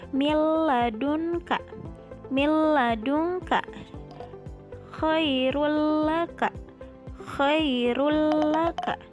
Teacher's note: Yang menjadi ciri idgham bila gunnahnya yaitu di sini ada nun sukun bertemu dengan lam, maka dibacanya langsung dimasukkan ke huruf lamnya